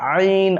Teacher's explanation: درمیان یہ بیچ والا جو حلق ہے درمیانی حلق سے عین ادا ہوتا ہے